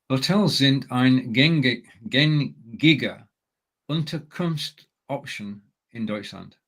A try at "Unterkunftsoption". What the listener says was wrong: Now, you just made the one common mistake of reading option and therefore reading it in English. Hotels sind eine gängige Unterkunftsoption in Deutschland. So we've got 2 words there, Unterkunft and Option. And putting them together, we need the S so that it can flow as one word. So Unterkunftsoption.